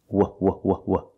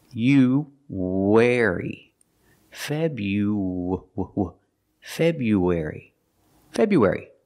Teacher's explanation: when we link you and air we have a sound in the middle it's like a w sound